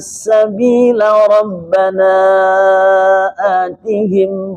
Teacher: Laknya dibaca pendek ketika wasal dengan Rabbana atihim.